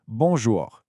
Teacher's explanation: the nasal vowels. This is where the sound comes out partly through your nose.